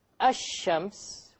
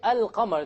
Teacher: the Arabic word for ash-shams, the lam is silent, and the Arabic word for al-qamar, the lam is not silent